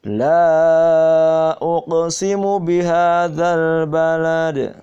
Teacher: yaitu la-nya panjang mad jaiz